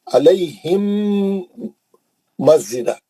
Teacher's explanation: अलैहिम मस्जिदा मीम के बाद मीम आ गया गुन्ने से पढ़ेंगे